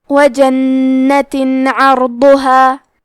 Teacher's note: کلمت عرضها میں حرف العین کو حلق کے درمیان والے حصے سے پڑھنا ہے. را ساکن کو ظاہر کریں گے اور اسے موٹی آواز میں پڑھیں گے. حرف الضاد کی ادائیگی زبان کے کروٹ اور اوپر کے داڑھوں کی جڑ سے ہے. · ہم یہاں تنوین ظاہر کریں گے اور اسے نون ساکن پڑھیں گے اور بغیر غنہ سے یہ حکم کو ادا کریں گے